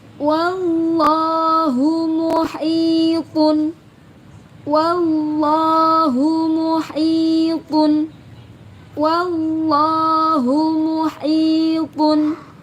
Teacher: Ingat, kalimat Allah yang jatuh setelah fathah maka wajib dibaca tebal.